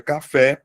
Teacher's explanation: Porque ela tem como sílaba tônica a última sílaba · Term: oxítona